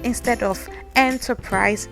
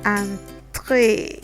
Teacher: Now the EN is what normally we have the tendency to think will sound like this, because in English we say enter, enterprise, but in French this EN is pronounced so it's actually like an A sound with a nasal behind it